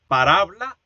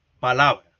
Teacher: hay una metátesis entre el vibrante simple, alveolar sonoro, y el aproximante lateral, alveolar sonoro. Eso explica el paso de parábola a la forma moderna, palabra.